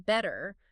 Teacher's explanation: The t sound, especially between vowels or sometimes at the end of words. In British English, it's often a clear crisp t sound